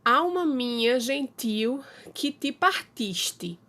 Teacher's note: Partiste é uma palavra paroxítona, em que a sílaba forte dela, a sílaba tônica dela é o tis.